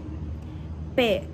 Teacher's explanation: Blocage de l'air au niveau des lèvres. Voile de palais relevé. P. Consonne sorte. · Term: occlusifs bilabiales